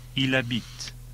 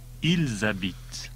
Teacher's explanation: the S of il, I-L-S, gets carried over and pronounced.